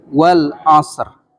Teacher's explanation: Sodnya itu mendekati huruf sin, padahal sin dengan sod itu beda. S biasa dengan sod itu lebih tebal huruf so.